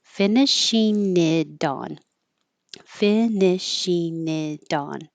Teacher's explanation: this T changes to a D, so it'll sound like dawn